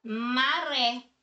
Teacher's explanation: nós temos aqui o ré que é a sílaba tônica da palavra que é aqui né que apresenta aqui o assento gráfico agudo